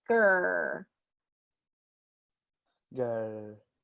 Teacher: the back of the tongue comes up and touches the roof of your mouth